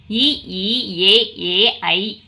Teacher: வாய் திறக்கும் முயற்சியுடன் நாக்கின் அடி ஓரமானது மேல்வாய் பல்லை பொருத்தும் முயற்சியால் பிறக்கின்றன